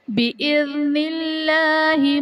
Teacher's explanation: بِإِذْنِ اللہ میں اسم جلالت اللہ عز و جل کے لام سے پہلے حرف کے نیچے زیر ہے تو یہاں پر اسم جلالت اللہ عز و جل کے لام کو باریک پڑھیں گے